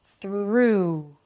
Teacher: Think like there is an extra w there at the end. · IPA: θɹuː